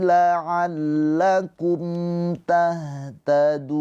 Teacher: ada mim sukun bertemu selain mim dan ba. Ini adalah izhar syafawi. Mimnya dibaca dengan jelas.